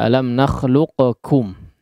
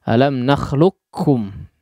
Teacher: lebih masyhur ya Bahkan dalam riwayat hafshim dia di idgham kan langsung masuk kepada huruf Kaf tanpa menyisakan sifat daripada huruf qaf sama sekali